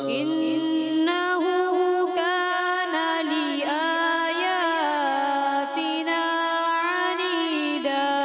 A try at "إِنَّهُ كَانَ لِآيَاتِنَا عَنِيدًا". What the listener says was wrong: ابھی بھی تھوڑی حمزہ کی بجائے تھوڑا عین مکس ہوتا ہے، کوشش کریں حمزہ کلیئر کرنا، ٹھیک ہے.